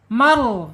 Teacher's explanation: sebelum ro sukun harokatnya fathah, harus tebal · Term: rohnya tebal